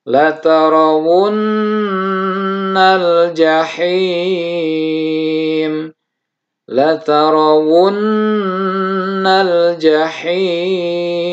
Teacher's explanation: di nunnya ditahan sampai menghasilkan dengung